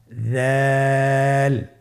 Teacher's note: দালের মাখরাজ হলো জিহ্বার আগা সামনের উপরের 2 দাঁতের আগার সঙ্গে লাগিয়ে উচ্চারিত হয়।